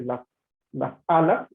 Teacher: por lo menos en esta frase, las alas, ahí se inserta una glotal